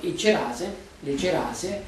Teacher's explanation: si raddoppia la consonante iniziale quindi cerase le cerase che hanno una sola C Raddoppia e